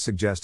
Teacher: the accent is in the second syllable corresponding to jest